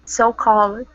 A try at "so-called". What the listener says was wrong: Good. Perfect.